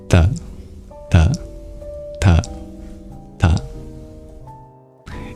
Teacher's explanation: all you have to know to produce the T sound in Sanskrit is understand that it's dental, which means that it's produced with your teeth.